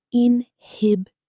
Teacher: 4 syllables. The stress falls firmly on the second.